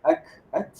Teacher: ta ditekankan hingga terhembus udara atau nafas.